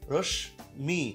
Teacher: শব্দের মাঝে মফলা যদি থাকে, সেই মফলার উচ্চারণ দ্বিত্ব এবং সামান্য নাসিক্য হয়